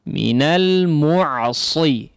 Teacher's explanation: bukan sin biasa, ya, atau boleh disebut dengan sin, tapi sin yang ditebalkan, ya. Nah, sin yang ditebalkan adalah huruf shad, ya.